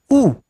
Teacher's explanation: अब यदि होठ आगे ना आए तो ऊ नहीं निकलेगा गुरुजी, माने होठ को आप आगे ना लाने दीजिए, ऊ बोलिए, नहीं बोल पाएंगे। ऊ बोलने के लिए होठ आगे आते हैं, ऐसे होता है आपका होठ, ऐसे चुंबन जैसी स्थिति में आप बनाते हैं